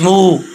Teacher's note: یہ واو مدہ ہے، اس کو 1 الف کی مقدار لمبا کریں گے